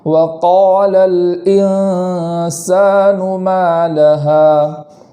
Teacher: ما لہا میں میم پر بھی الف مدہ ہے اور آخر میں ہا پر بھی الف مدہ ہے، دونوں میں ایک ایک الف کے برابر تاخیر کریں گے